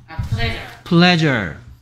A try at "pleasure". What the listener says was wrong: pleasure 아니고 r 아니고 l. pleasure.